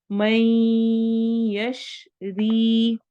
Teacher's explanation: मैं इदगाम गुन्ना हो रहा है, हरूफ मलून में से या आ रहा है। यशरी या मद्दा होगी।